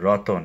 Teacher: এই যে তয়ের মধ্যে একটা অ আসছে, এই জন্য এটা হচ্ছে মধ্য স্বরাগম